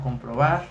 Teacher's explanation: la sílaba tónica es la más elevada que termina en bar